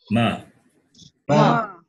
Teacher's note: So ma, when we say ma, it is labial plus nasal. That is lips plus nose.